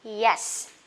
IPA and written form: jes (yes)